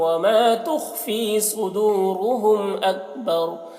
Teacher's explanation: صدورہم میں واو مدہ ہے اور یہاں پر را کو صاد کو دونوں کو پر پڑھیں گے